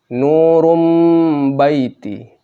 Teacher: Nun mati. Ketemu ba. Nun-nya menjadi mim mati. · Run-nya menjadi rum, Run menjadi rum.